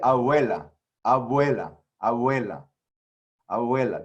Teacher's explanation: So the real thing is not just a v, like a v, it's actually just air blowing through your two lips. You just say the word b without letting your lips touch. So it's actually like in Spanish, they say like, we say in English, abuela for grandmother.